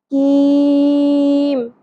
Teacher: کاف باریک ادا ہوگا، کاف کو قوف کی طرح پر نہیں کرنا